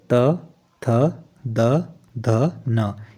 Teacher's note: त् वर्ग जो है दांतों से